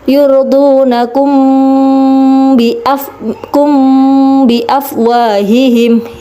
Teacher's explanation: Karena ada mim sukun bertemu dengan huruf ba, jadi bacanya ikhfa samar. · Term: ikhfa syafawi